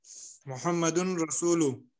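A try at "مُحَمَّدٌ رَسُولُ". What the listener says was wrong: नहीं, अलिफ लाम भी है। मुहम्मदुर रसूल तो ये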